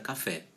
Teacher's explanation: a gente sabe que é a sílaba tônica da palavra café é o fé